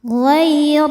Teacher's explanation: Ghair ro dibaca tafkhim karena berharakat fathah. Cara bacanya ditebalkan. · mad thobi zohiri karena ada ya sukun sebelumnya kasrah cara bacanya panjang dua harakat madinin nin jika berhenti hukumnya mad arid lukun karena mad thobi'i bertemu dengan huruf yang disukunkan karena waqaf mad thobiinya ya sukun sebelumnya kasrah huruf yang disukunkannya nit nun nun ya.